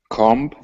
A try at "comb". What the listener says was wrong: Good. Be careful. I heard a B. Drop the B. Comb. Good.